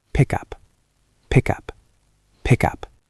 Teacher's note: The K sound stops, but we want to move the K. It becomes pick up.